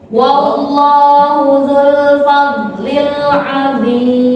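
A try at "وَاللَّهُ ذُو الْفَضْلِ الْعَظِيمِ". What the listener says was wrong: Dorong suara tak bagus. Dzul fadlil azim. Al-azim.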